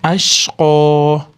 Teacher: Qofdan keyin yaa madd bo'lganligi uchun cho'zamiz